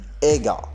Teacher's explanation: the g sound in ega is normally pronounced as a velar stop